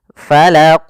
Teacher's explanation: Qalqalah artinya ittirab, memantul. Maka dalam membaca al-qalqalah huruf qafnya harus kita pantulkan.